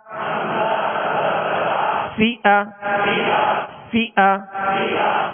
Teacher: اوپر کے جو دو سامنے والے دانت ہیں اس کے کنارے اور نچلے ہونٹ کا تر حصہ، یہ مخرج ہے، یہ نکلنے کی جگہ ہے فا کے